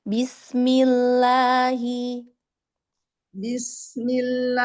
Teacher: Iya, bismillah, lamnya ditipiskan lagi.